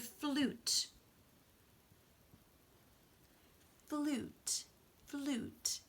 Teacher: It's really more of an oo, not a you